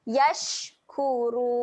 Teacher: Afala yash, huruf shin ketika mati, sifatnya keluar angin